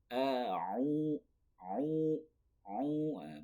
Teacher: Baru ain itu di tengah tenggorokan